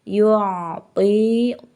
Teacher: Yu'ti, to-nya ini mad tabi'i karena ada to berbaris kasroh menghadapi ya sukun, ini mad tabi'i, panjang bacaannya adalah 2 harokat